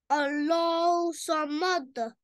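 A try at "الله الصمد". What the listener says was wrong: नहीं, दोबारा आपने हा नहीं पढ़ा, हा को लाजमी पढ़े। अल्लाह समद। सांस खींचे, ये तो दो वर्ड्स हैं भाई, एक सांस में पढ़े ना इसको।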